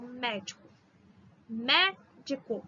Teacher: 3 sílabas, a antepenúltima que é a forte. Proparoxítona, todas são acentuadas.